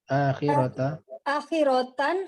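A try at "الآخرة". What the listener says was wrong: Bukan tan, ta.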